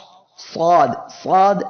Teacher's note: জিহ্বার আগা সামনের নিচের দুই দাঁতের পেট ও আগার সঙ্গে লাগিয়ে সদ অক্ষরটি উচ্চারণের সময় জিহ্বার গোড়া উপরের দিকে উঠে এসে অক্ষরটি মোটা হবে